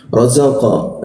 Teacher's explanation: Qa itu dipantulkan, itu pantulkan ke arah o. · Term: huruf qa